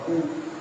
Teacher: ऊ बोलने के लिए दोनों ओष्ठों को सिकोड़ना पड़ेगा। तो निकलेगा ऊ।